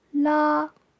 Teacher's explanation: Tone 1 is high and stays the same